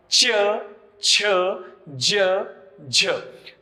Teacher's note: च, छ, ज, झ या वर्णांचा उच्चार जर ययुक्त होत असेल तर त्यांचा समावेश तालव्य गटामध्ये केला जातो.